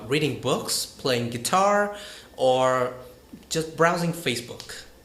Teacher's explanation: raise your voice like that throughout the list and then falls by the last item